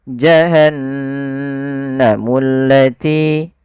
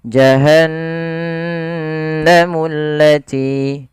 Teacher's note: Dia menandakan di situ bacaannya adalah bacaan gunnah. Gunnah yaitu membunyikan suara hingga masuk ke rongga hidung kita. Maka suara nunnya dimasukkan ke rongga hidung.